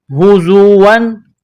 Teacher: زا میں سیٹی کی آواز پیدا کرنی ہے، دانتوں کو سختی کے ساتھ ملائیں گے